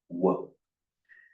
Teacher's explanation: The lips aren't touching, they're rounded, but the lips don't touch.